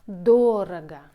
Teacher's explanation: The stress on the first syllable. It's adverb.